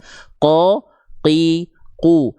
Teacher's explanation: Kalau qof dia lebih dalam, pangkal lidahnya seluruhnya nempel ke langit-langit yang warna merah, langit-langit lunak sehingga enggak keluar nafas. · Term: huruf qaf